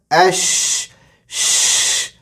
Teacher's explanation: حمزہ جو bottom throat مطلب حلق کے نچلے سے حصے سے ادا ہوگا، اور شین منہ بھر کے ادا ہوگا، اش، اس، اس، یہ غلط ہے، اشہدو، اشہدو نہیں، اش، ہوا پوری ظاہر، ہوا پوری نکلنا چاہیے، منہ بھرا ہوا ہونا چاہیے.